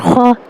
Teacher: یہ ہلکی سی گلے میں وائبریٹ محسوس ہو رہی ہے